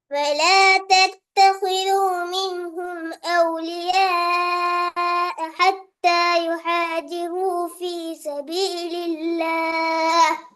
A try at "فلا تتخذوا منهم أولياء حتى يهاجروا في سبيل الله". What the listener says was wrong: இதுல ரெண்டு பிழை. இது ஒரு பிழையாக எடுக்காட்டி அவுலிய அந்த சவுண்ட இன்னும் வெளிப்படுத்தணும். அடுத்தது யுஹாஜிரூன ஹர்ட சவுண்ட் வரணும். பெரிய ஹ சவுண்ட் உச்சரிக்கணும். அது போதாது, நல்லாவே போதாது. ராயித் ஏண்டால் பாருங்க, ராயித் இதுல ஹத்தா என்றதுல சின்ன ஹேகிது, அப்படித்தானே? இங்க பெரிய ஹேகிது. அப்ப ரெண்டு வித்தியாசம் வரணுமே, அது முக்கியம்.